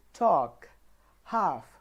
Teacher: there is no L sound in these words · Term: the letter L is silent